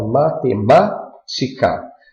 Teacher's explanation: as proparoxítonas a sílaba tônica recai na antepenúltima sílaba